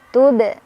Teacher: Dibacanya mantul, pantulannya kecil. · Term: qalqalah sughra